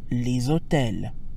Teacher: that gives us les hôtels, where the S in les sounds like a Z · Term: liaison